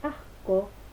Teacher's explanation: en asco sí aparece la dorsovelar porque se ubica o se coarticula después de la vocal A